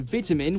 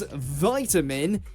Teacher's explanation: In the UK, you'll hear vitamin with a small I, but in the US, it becomes vitamin as though it's a capital I.